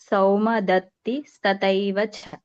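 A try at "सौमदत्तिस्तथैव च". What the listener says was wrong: ತಥೈ ಅಲ್ಲಿ ವ್ಯತ್ಯಾಸ ನಮ್ಮ ಮಹಾಪ್ರಾಣದ ಗೊತ್ತಾಗಬೇಕು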